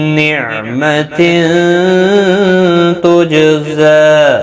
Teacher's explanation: تنوین کے بعد حروف اخفا کا تا اخفا حقیقی ہوگا، غنہ کے ساتھ پڑھیں گے